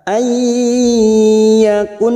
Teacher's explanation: nun sukun bertemu ya masuk dan mendengung masuk ke huruf ya dan ditahan 3 harokat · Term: idgham bigunah